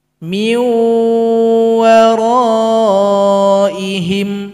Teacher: nun sukun bunyinya dan juga bentuknya digabung kepada huruf waw, sehingganya huruf waw ini harus didengungkan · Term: idgham bi ghunnah